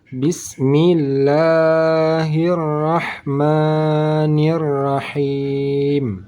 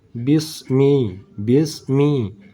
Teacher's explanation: huruf sinnya sudah tebal dibaca desis angin dari huruf Sin sudah tebal itu salah karena ini huruf sin bukan huruf Shad